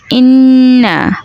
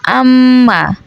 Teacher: নাকের বাসি হইতে গুন্নাহ উচ্চারিত হয়